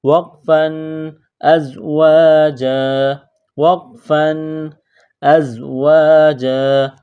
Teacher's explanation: جب اس لفظ پر رکیں گے، سٹاپ کریں گے تو دو زبر کی تنوین کو الف سے تبدیل کریں گے